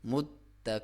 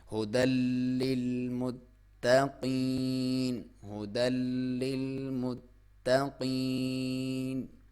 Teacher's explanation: تار کے اوپر شد ہے تو تا کو ہم کھینچ کے تھوڑا سا ہم اسے دبا کے پڑھیں گے